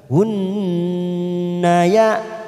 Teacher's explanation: Tsumma langsung pada huruf nun yang bertasdid bacaan gunnah. Karena kita wasol maka hunna ya kita tekan dulu 3 ketuk.